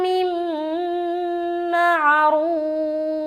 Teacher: را کو موٹا رکھتے ہوئے واو مدہ کر کے فا کے اوپر سٹاپ کریں گے · نون ساکن کے بعد میم آ گیا تو ادغام ناقص کا غنہ کریں گے